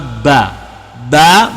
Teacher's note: Baba maksudnya berasal dari pada bibir syafataini bibir